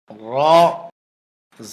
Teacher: র হরফটি জিহ্বার আগার পিঠ উপরের তালুতে লাগবে, মোটা হবে, বাংলা আকার প্রকাশ পাবে না।